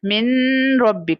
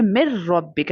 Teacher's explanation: تو یہاں پر را لیٹر ہے نون ساکن کے بعد، تو یہاں پر ہم ادغام کریں گے لیکن بغیر غنہ کے، یعنی نون کا ساؤنڈ ہم سکپ کر دیں گے